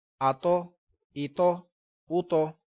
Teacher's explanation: یہ حروف مستعلیہ بھی ہے اور قلقلہ بھی ہے۔ اس کو موٹا بھی ہم نے پڑھنا ہے، ساتھ میں قلقلہ بھی کرنا ہے۔